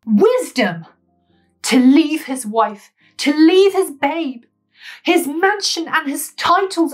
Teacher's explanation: with the damning act of leave falling on the stressed syllable in the line